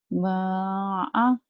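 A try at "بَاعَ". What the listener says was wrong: Ba, bukan ma. Ba'a.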